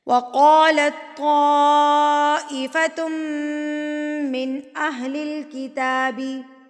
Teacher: اب تشدید میم کے اوپر ہے تو یہ میم مشدد بن گیا، تو میم مشدد پر غنہ کیا جاتا ہے، اس کو ناک میں آواز کو لے کر جایا جاتا ہے